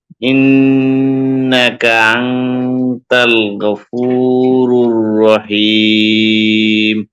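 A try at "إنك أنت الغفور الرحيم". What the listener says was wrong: মাশাআল্লাহ।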